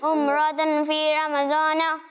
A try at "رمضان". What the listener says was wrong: زوا ہوتا ہے, زواد ہوتا ہے یا ضاد ہوتا ہے عربی میں؟ ضاد ہوتا ہے نا. رمضان یہ اردو میں ہوتا ہے. اردو میں ہم بولتے ہیں.